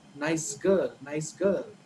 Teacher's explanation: nice ends with sa, and girl, the girl starts with g. But in the connected speech, right, when you say it together, the sa becomes za. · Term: Assimilation